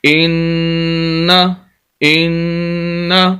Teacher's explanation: شد والے لفظ کو پڑھتے ہوئے سخت کر کے آواز کو اور ہلکے سی آواز کو روک کر پڑھنا ہے، اور دوسرا یہاں پر غنہ بھی کرنا ہے کیونکہ نون مشدد شد والا نون ہو وہاں پر غنہ بھی ہوتا ہے۔